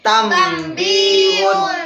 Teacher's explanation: Berarti huruf nun sukun bertemu dengan ba. Dibacanya tambihun. Membaliknya menjadi mim.